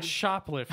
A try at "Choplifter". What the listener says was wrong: Not shop, no. No. Chop. Lifter. Choplifter?